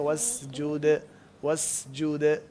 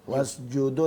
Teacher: جب دال کا قلقلہ کرتے ہیں تو ایسا محسوس نہیں ہونا چاہیے جیسے دال کے اوپر پیش ہے اس کو وسجود دال ہمیشہ قلقلہ ہمیشہ زبر کی طرف مائل